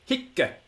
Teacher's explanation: The Romans were quite clear that the word for this has got a short vowel, but it's a heavy syllable. · In this case, we have a short vowel, and only one consonant is written down. But the Roman grammarians come to our rescue and tell us that this little word was pronounced with a double C on the end